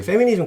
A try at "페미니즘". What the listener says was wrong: F 발음이 너무 강해가지고